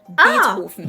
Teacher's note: Well, he himself would have said his name as Ludwig van Beethoven. The V in his name is pronounced the same as an F sound